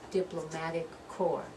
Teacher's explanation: So diplomatic corps. That P we don't pronounce.